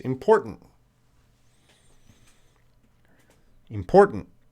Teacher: both T's are going to be reduced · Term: T's are reduced